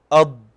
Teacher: الآن أطبق، عندنا نقول أض أض، تسمع أض أض، ض ضو ضي، فتجد أن الصوت قوي لأنه من الحروف المطبقة وكذلك من الحروف المفخمة المستعلية. طيب، سبب الاستطالة قلنا هو جريان صوت الضاد في حيز ضيق